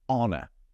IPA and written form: ˈɒnə (honor)